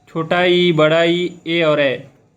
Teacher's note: अग्र स्वर जिसमें ध्वनि जो है जीभ के अग्र भाग से उत्पन्न होती है